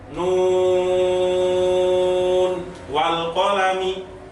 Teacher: Kalau musaqqal itu disertai dengan dengung atau tasydid tadi, tapi kalau mukhaffaf itu tidak disertai dengan dengung. Jadi nun itu ketika dibaca nggak boleh dengan adanya dengung. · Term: mad lazim harfi mukhaffaf